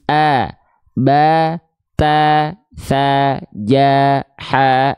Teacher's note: ketika fathah bunyi vokalnya adalah bunyi vokal a terdengarnya ya maka dia termasuk ke dalam huruf yang tipis